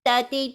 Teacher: تھی تھو نہیں کہیں گے، ہوا کے ساتھ نہیں